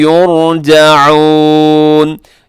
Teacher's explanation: रा साकिन से पहले पेश है, तो यहाँ रा पुर पढ़ी जाएगी।